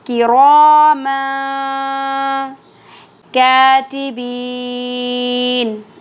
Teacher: را کے پر زبر یا پیش آ جائے تو را ہیوی پڑھا جاتا ہے، پر ہوتا ہے فل ماؤتھ کے ساتھ